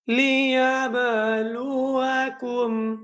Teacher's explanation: কলকলা করে পড়তে হয়। যেমন গম্ভীরভাবে আওয়াজ করতে হয়।